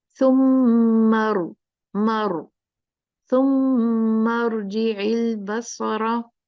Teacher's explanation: इसलिए मैंने आपको सिर्फ हमजतुल वसल कहा कि अगर हमजतुल वसल है रा साकिन से पहले, तो फिर हमजतुल वसल पे इवन अगर कसरा है तो भी रा मोटी पड़ी जाएगी।